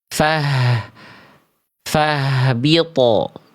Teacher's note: Oh, pantulannya tipis. Harusnya pantulan huruf th-nya tebal karena huruf th-nya huruf tebal.